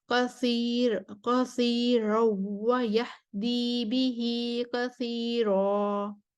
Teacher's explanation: اس میں کثیر روا پر ورش کے لیے ترقیق الرا ہے اور خلف کا ادغام بلا غنہ ہے، اور پھر کثیر روا پر بھی ورش کے لیے ترقیق الرا ہے۔